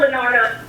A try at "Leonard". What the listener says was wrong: No O, it's just Leonard.